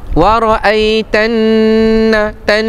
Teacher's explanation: Nun yang bersabdu hukumnya wajibul ghunnah.